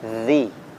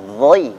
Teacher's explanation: kalau dzal tipis dzi, ini dha tebal, dhai.